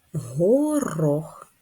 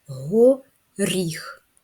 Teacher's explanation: в слові горох р твердий приголосний в слові го ріх р м'який приголосний